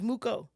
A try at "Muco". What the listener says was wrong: Yes. It's pronounced Mucho. It's, it's spelled Muco, but in Kirundi, a language in Burundi, it's not C, it's not K, it's Ch, it's Mucho.